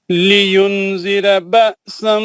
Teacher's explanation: الف حمزہ ساکنہ کا جھٹکا ہے نا